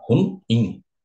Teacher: A letra B ele vai dizer, mais uma vez que a tonicidade está no ru, ele vai dizer que é ruim, mas não é um monossílabo, é uma palavra oxítona, rum-in, tonicidade está no in